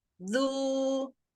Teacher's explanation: Ujung lidahnya keluarin sedikit, kemudian monyong sempurna. Bunyinya dorong. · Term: uzalnya